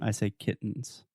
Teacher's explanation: tongue position everything is the same I'm just not aspirating making that extra T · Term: stop T